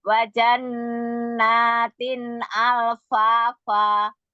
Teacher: Naam lah Pak. Nun musyadadanya jangan lupa ditahan.